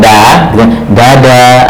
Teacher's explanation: kalau kita bilang dada, berarti itu rasanya kalau kita di sini itu seperti ujung lidah bertemu langit-langit depan